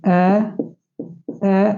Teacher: जिसमें मुख का द्वार कम खुला हो वो क्या कहलाएंगे बच्चों अर्ध विवर्त स्वर